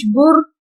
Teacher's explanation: جیسے اس پہ بارو پیش بر، اب اس سے پہلے پیش ہے تو بر کو موٹا کر کے پڑھیں گے